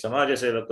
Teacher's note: You cannot cut the vowel A, which is there in Ja, Samaja.